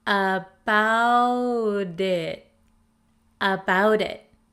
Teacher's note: The flap T in American English sounds like a soft D sound. D, D. The T comes between the vowels in the word about and the I of the word it.